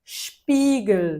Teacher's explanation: o S seguido de consoante, aí sim vai ter o som de S chiado carioquês. Então, vai ser Spiegel, chia mesmo, com vontade.